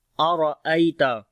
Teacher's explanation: را کو موٹا پڑھیں گے، یا لین ہے تا کو باریک پڑھیں گے